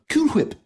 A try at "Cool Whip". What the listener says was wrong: Cool Whip. You're saying it weird. Why are you putting so much emphasis on the H? Say whip.